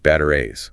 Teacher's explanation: Notice the double T often becomes a flap T